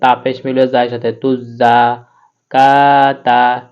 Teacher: এই কাফটা জিহ্বার গোড়া থেকে একটু আগে বাড়াইয়া তারপর ওখানে তালুর সঙ্গে লাগিয়ে উচ্চারণ করতে হয়।